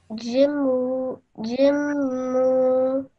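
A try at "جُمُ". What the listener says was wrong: But don't stretch the sound out of mu for too long. Just 1 second, okay?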